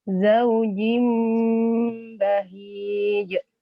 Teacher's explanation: Dengungnya hati-hati, ditahan 3 ketukan.